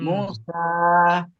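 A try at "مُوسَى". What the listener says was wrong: মু মাদ আছে এখানে, মু অমাদ মুসা।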